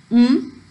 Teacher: the air is released through the nasal cavity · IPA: /m/